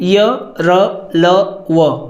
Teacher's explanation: सघोष व्यंजन है क्योंकि स्वर तंत्रों में कंपन होता है